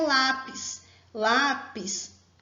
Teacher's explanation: Lápis possui a penúltima sílaba forte.